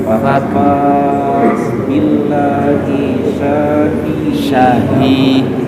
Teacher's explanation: Sa-nya pendek, ha-nya yang panjang.